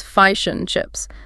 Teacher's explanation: The and gets reduced to n